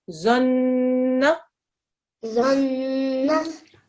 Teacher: When you join it onto the noon, you've got to press down on the noon, make the gunna sound for 2 seconds, and then add the fatha at the end.